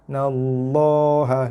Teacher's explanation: nun sabdu, tekan pada nun dan dengung